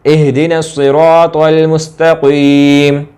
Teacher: स्वाद को मोटा भी करेंगे और आगे क़ाफ को भी मोटा करेंगे, त्वा को भी मोटा करेंगे · मुस्तकीम वाले ता को मोटा नहीं करेंगे क्योंकि वो नुक्तों वाला है, वो तोए वाला त्वा नहीं है।